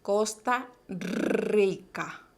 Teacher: recuerden el sonido vibrante múltiple en los alveolos